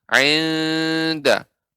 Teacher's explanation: Huruf nun disamarkan dan ditambahkan dengan gunnah, yaitu dari hidung, rongga hidung kita.